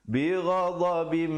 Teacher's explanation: Bighadabim, idgham bi gunnah. Asalnya ba tanwin 2 di bawah bunyi bin, tapi bila datang mim jadi bim dengan kadar panjang 2 harakat.